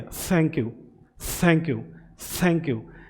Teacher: अब dental sound में क्या है, देखिए ये जो आपका टंग है वो अपर टीथ की तरफ टच होता है